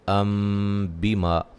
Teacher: اقلاب ہے، اس کو ام بیما نہیں پڑھیں گے، ام بیما، نون تنوین کے اندر جو نون چھپا ہوا ہے اس کو میم سے بدل کے پڑھیں گے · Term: نون تنوین کا اقلاب